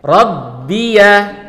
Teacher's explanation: pastikan kalian tekan tasydid di huruf ba-nya